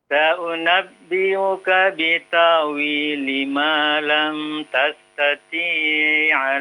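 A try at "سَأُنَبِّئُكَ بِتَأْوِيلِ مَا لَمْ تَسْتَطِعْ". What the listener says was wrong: Jangan dipanjangkan. Jangan dipanjangkan.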